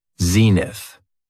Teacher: It has 2 syllables, and the stress is on the first syllable.